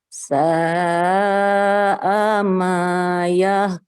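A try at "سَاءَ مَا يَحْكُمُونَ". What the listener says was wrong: Oke, haknya coba dilembutkan.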